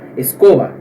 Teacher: La E se pronuncia mais fechado do que o português